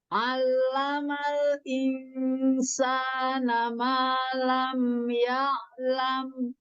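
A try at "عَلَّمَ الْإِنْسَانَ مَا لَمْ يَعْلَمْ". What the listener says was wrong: Iya, huruf ainnya lebih dialirkan lagi. Allamal insana ma lam ya'lam.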